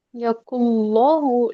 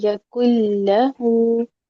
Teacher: लाम को मोटा नहीं करें।